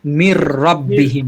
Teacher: নুনের পরে র আসছে এজন্য মির রব্বিহিম হয়ে গেল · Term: ঈদগামে বেলাগুন্না